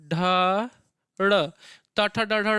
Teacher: बिना अपनी जिह्वा को मूर्धा में लड़ाए आप नहीं बोल सकते टाठा डाढ़ा